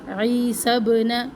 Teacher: سین کو با سے ملائے اور با کے اوپر قلقلہ بھی کرنا ہے کیونکہ با کے اوپر ساکن ہے. مریم رو کو پر پڑھنا ہے.